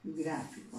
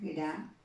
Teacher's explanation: Y lleva la mayor intensidad, ¿dónde? En gra, en la sílaba gra. Entonces, esta sílaba se va a convertir en la sílaba tónica.